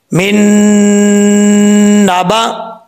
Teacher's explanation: okay, यहां पर नून के बाद नून आ रहा है, यहां पे इदगामी यरमलून हो रहा है, नून साकिन के बाद हरफ यरमलून में से है, तो एक अलिफ की मकदार गुन्ना किया जाएगा